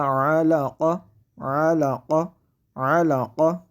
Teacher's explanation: یہاں پہ عین کی آواز کو حلق کے درمیان سے ادا کریں گے